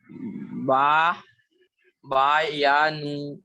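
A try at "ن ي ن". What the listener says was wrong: با نہیں ہوتا، وہ با نہیں. دیکھیے نون.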